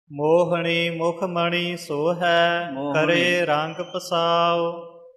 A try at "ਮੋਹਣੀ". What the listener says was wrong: ਮੋਹਣੀ ਨਾਣੇ ਦਾ ਉਚਾਰਨ ਰੱਖਣਾ, ਇੱਥੇ ਨੰਨਾ ਨਾ ਬੋਲਿਆ ਜਾਵੇ।